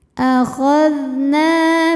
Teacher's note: Na dihukumi dengan mad tabi'i dhahiri. Sebab ada alif yang sebelumnya berbaris fathah, maka huruf nun kita panjangkan cukup 2 harokat saja.